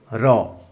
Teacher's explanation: যে ব্যঞ্জন ধ্বনি উচ্চারণের সময় জীভের সামনের অংশ মৃদু কেঁপে ওঠে তাকে কম্পিত ব্যঞ্জন ধ্বনি বলে